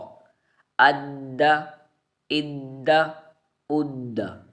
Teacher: دال حروف قلقلہ میں سے ہے اور یہاں پر حروف قلقلہ جماؤ کے ساتھ یعنی جمع کر ہم قلقلہ کریں گے